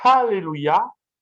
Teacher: Alléluia, c'est la véritable prononciation parce qu'il y a un hé aspiré, comme chez les Anglais. Hein. Les Anglais utilisent le hé, le H aspiré.